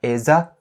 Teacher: because is ending with a z sound, and you link it to a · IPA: / ɪ-zə /